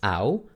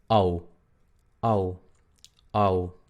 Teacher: Entonces no es AU, sino es OU, OU, OU, A, U, OU, OU. Y la U no es exactamente U, es un sonido más para atrás.